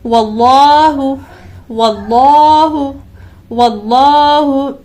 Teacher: یہاں پر بھی دیکھیں اس میں جلالت اللہ عز و جل کے لام سے پہلے حرف پر زبر ہے، لہٰذا اس اللہ تعالیٰ کے نام کو بھی ہمیں موٹا پڑھنا ہے